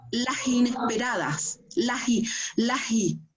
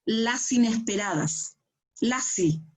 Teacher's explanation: Junta la S con la consonante con la vocal. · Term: ligazón